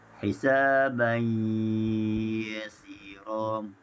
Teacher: Dan pada ayat yang ke-8, tanwin bertemu dengan ya, hisaban yasira. Tanwin bertemu dengan ya, mengikut bacaan riwayat Khalaf dibaca dengan idgham ma'al ghunah, dimasukkan di dengungan, sama bacaan dengan riwayat Hafs al-Asim.